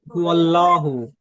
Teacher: থাকবে, আল্লাহ শব্দে হুম, লামের পূর্বে জাবার অথবা পেশ যদি হয়, তাহলে আল্লাহর লাম পুর হবে